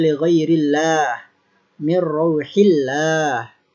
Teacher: Lafzul jalalah ini dibaca tarqiq atau dibaca tipis ketika lafzul jalalah sebelumnya harokat kasroh.